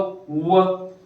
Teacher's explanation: व म्हणा बरं, व वरचे दात तुमच्या होठाला लागतात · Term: दंत आणि ओष्ठ्य